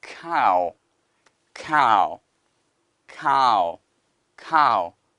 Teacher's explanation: 이런 것들이 나면 소리가 아, 그 다음에 우, 아우가 됩니다. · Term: 아우 소리